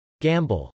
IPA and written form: gˈæmbəl (gamble)